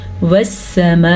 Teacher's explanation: والسماء، اس مد کا آپ نے دھیان رکھنا ہے، یہ مد 4 سیکنڈ تک لمبی کی جاتی ہے، اس کی مقدار لمبی ہوتی ہے